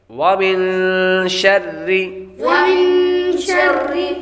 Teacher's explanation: نون ساکن کے بعد شین حروف اخفاء میں سے آ رہی ہے تو غنہ کریں گے، را کے نیچے زیر ہو تو را کو باریک پڑھتے ہیں۔